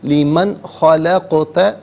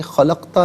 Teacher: قاف ساکن ہے لیکن یہاں پر قلقلہ کیا جائے گا، آواز لوٹتی بھی محسوس ہونی چاہیے